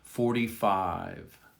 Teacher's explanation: 45. It's a very soft V at the end of 5. You almost don't hear it. Listen again.